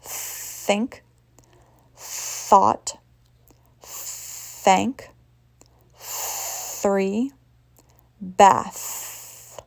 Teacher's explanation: For voiceless, you're only blowing the air for the words think, thought, thank, 3, bath.